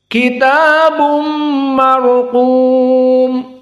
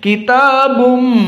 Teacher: Bun, tanwin bertemu dengan mim, maka dalam keadaan idgham bi gunnah. Sehingga dari khaisum, dari hidung, dan dua harokat.